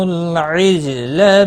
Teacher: لام ساکن کو ہلانا نہیں۔ جیم ساکن پر قلقلہ ہوگا، لا کو کھینچنا نہیں۔